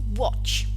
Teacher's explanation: the stem ends in a voiceless post-alveolar affricate sound, ch, watch. So, how is the past tense morpheme realized?